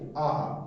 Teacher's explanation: দেখো জীব সব থেকে নিচুতে আছে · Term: নিম্ন স্বরধ্বনি